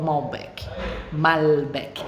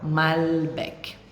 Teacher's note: O L em português normalmente é pronunciado com U, como Brasil, por exemplo. E aqui não, o L é som de L mesmo.